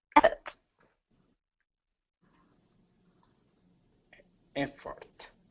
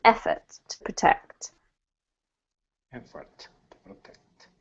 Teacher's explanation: Emphasis on the first syllable in an effort to protect.